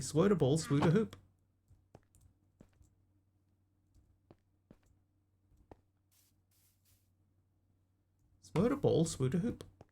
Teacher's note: He substituted an S sound for th and he couldn't say the R sound.